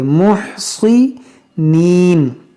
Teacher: अब इसको पढ़ेंगे मुहसिनीन, स्वाद को मोटा करके, मुहसिनीन।